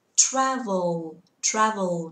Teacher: cái từ L ở cuối các bạn phải nâng lưỡi lên đặt sau răng cửa nhá